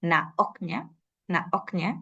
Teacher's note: sonidos en su luego otra cosa importante también es la sinalefa cuando una palabra empieza con una vocal el checo casi siempre inserta una oclusiva glotal